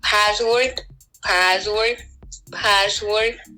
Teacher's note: That's why when she pronounces the word password in English, she doesn't pronounce sa necessarily, and she reverts back to za · But the more interesting thing that happened is that instead of sa, they pronounce it za, so they say password